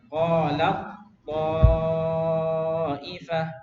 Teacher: bukan dibuang, tapi taknya masuk ke dalam huruf to ya. Masuk 100% kamil ya. Ibaratnya masuk ke rumahnya to, nggak ada sisa ya.